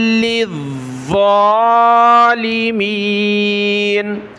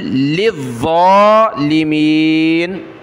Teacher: لام اور ضا دونوں کو سخت کیا اور ضا کو ایک الف کی مقدار اوپر کھینچا